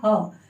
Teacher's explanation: महाप्राण है लेकिन सघोष है